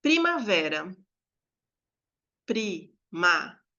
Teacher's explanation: a gente tem uma polissílaba, primavera, e é a penúltima, que é tônica. Então, eu vou ter uma paroxítona, que é a sílaba vé, tá?